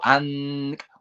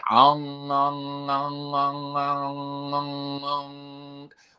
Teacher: the back of the tongue at the roof of the mouth. So you could go an with the tip of the tongue at the front of the mouth.